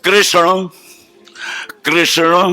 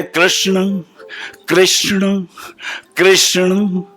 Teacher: ये जो शाह है और जो कृष्ण का आधा पेट कटा शाह है, दोनों के उच्चारण अलग हैं। ये जो शाह है ये मूर्धा से आएगा, कृष्ण, जिव्या ऊपर जाएगी तालू के पास, कृष्ण ऊपर, और वहां से जब नीचे गिरेगा तो बनेगा अड़ा, कृष्ण कृष्ण।